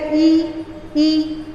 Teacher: जीभ का बीच वाला हिस्सा ऊपर टच कर रहा है, तो कौन सा उच्चारण स्थान है? तालु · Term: तालव्य स्वर